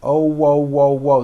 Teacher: there's a little hidden w at the very end